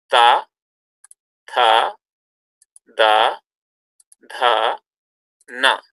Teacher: Then dental sounds. If you make these sounds, you notice that the tongue will be touching the teeth.